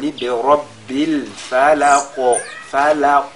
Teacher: Si on fait birabbil falaq, là, la lettre qaf, n'est-ce pas, a cette autre caractéristique qui est at-tafkhim. Donc ici, pendant qu'on fait al-qalqala, on ressort également, on met l'accent sur son caractère emphatique